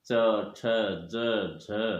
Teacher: अब च वर्ग का उच्चारण स्थान तालु है